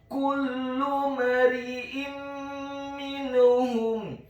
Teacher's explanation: Dalam hal ini adalah huruf mim yang tasydid dan kasrah, maka hukum bacaannya adalah memasukkan dengan dengung idgham bil gunnah